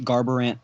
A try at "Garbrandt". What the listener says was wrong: said Garbrandt with 3 syllables? You said Garbrandt.